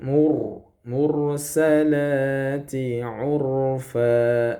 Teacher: Ini rnya tebal ya